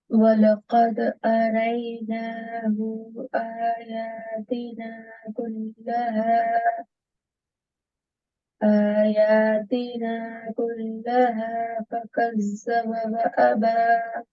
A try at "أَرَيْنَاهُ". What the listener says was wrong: Just be careful here. أَرَيْنَاهُ. One count. یہاں پہ آپ کا تھوڑا سا اسٹریچ ہو گیا تھا.